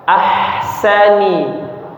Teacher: jangan sampai bergetar tenggorokannya, jangan ahsani ya, ahsani, tapi bersih. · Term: huruf ha